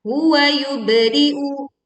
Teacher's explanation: suaranya memantul saat kita membaca ba sukun